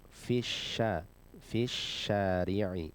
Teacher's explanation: harfu shin ini termasuk huruf yang ada di lidah bagian tengah ya, kita mengangkat ke atas, ke langit-langit